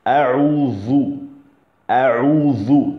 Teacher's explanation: Donc la langue va vers les dents du haut, entre les dents pratiquement. Entre les dents du haut et du bas.